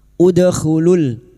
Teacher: Udkhulul dal sukun yang mati asli di tengah kalimat qalqalah sugro, jangan lupa dipantulkan